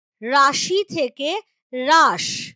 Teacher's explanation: স্বরধ্বনিটা লোভ পেয়ে যায় যেমন ধরো রাশি থেকে রাস এই যে শব্দের গোড়াতে শ্বাসাঘাত পড়লো তার ফলেই শব্দের শেষে থাকা যে রসই সেটা দুর্বল হয়ে গিয়ে লোভ পেয়ে গেল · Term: অন্তঃস্বরলোপে